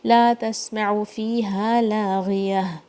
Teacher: غین کے نیچے کسرہ ہے تو تھوڑا سا اس میں ترقیق آتی ہے مگر پھر بھی یہ بھاری ساؤنڈ ہی ہے. لا تسمعوا فیہا لاغیہ، یا کی ساؤنڈ پہ پھر اگین آیا اینڈ ہوگی.